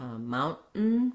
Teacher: So a lot of times the T in the middle of words will change. It'll either be stopped, like in the word mountain, where we don't really let that T out